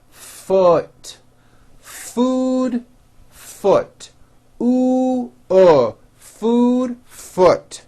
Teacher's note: the word foot is also spelled with a double o but it is pronounced with a lower vowel sound